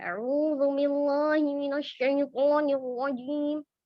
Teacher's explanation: Jadi ada tekanan berlebihan di tenggorokannya. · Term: Taq'irul fam